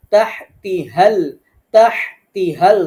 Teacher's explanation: তাহতিহাল, তাহতিহাল দুইটা হা দুই জায়গা থেকে। তাহ এটা আমরা উচ্চারণ করব গলার মাঝখান থেকে, আর তি হাল পরের হাটা হলকের শুরু থেকে ধাক্কা দিয়ে।